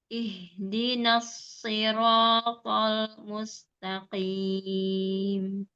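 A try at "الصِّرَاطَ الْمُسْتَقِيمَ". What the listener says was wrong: Lam sukunya belum mengalir. As-siratal mustaqim.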